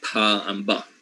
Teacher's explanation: alvear sounds like t d right same happens with um the sounds that are produced by making an obstruction with the two lips like upper and lower lips then you are making bilabial sounds